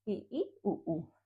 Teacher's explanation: संवृत स्वर में मुंह सबसे कम खुलता है